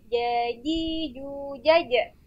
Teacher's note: Nah itu keluar dari kedua bibir. Kemudian huruf jim itu tengah lidah bertemu dengan langit-langit